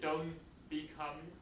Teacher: the N is assimilated to an M because of the following B yeah so the T ised first then you say don't become · Two things happen here at the same time. Don't, the t is elided, the n is assimilated to an m because of the following b. Yeah?